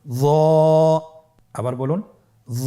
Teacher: জিহ্বার আগা, সামনের উপরের 2 দাঁতের আগার সঙ্গে লাগিয়ে উচ্চারিত।